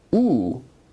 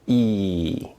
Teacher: ooh as you can clearly see and feel is a rounded vowel whereas e is not a rounded vowel